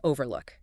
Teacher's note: you'd say overlook, with the emphasis on the first syllable